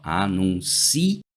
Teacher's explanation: Porque eu poderia ter essa palavra escrita assim, ó, anuncio, do verbo anunciar. E aí, a sílaba tônica passaria a ser uma paroxítona